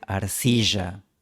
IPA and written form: aɾ'si.ʒa (arcilla)